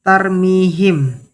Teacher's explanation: mad thobi'i pada huruf ya dibaca dua harakat